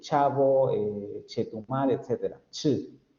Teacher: Después tenemos las africadas, la postalveolar sorda, la ch, de chavo, chetumal, etc.